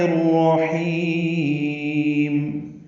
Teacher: را پر پڑھیں گے اور حیم میں ہا وسط حلق سے ادا کرتے ہوئے لمبا کریں گے وقفاً، میم ساکن پہ اظہار شفوی ہوگا۔